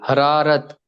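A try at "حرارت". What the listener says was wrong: Good, बहुत अच्छा।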